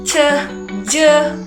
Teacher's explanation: Nah, kemudian di sini ada medio eh media palatal. Nah, media palatal itu ketika ee lidah bawah itu bertemu dengan langit-langit keras. Ini contohnya seperti C, je.